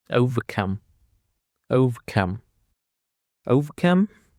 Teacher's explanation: Overcome consists of three syllables and the stress is on the last syllable.